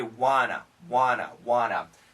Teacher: the n Sound is really powerful it cancels the T